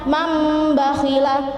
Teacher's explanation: jadi non mati diganti dengan mim mati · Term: iqlab